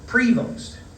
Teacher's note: I pronounced his surname with the stress, as I think we all do, on the first syllable